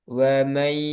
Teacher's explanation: Dengan gunah ditahan kemudian dimasukkan ke hidung juga. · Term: idgham biguna